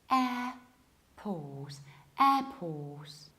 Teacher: So we have a very front and open and wide air, airport. We have then a very long O and we don't pronounce the middle R. So we say airport, airport. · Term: British accents